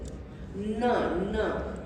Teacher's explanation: Your tongue goes to your palate. It's a palatal sound.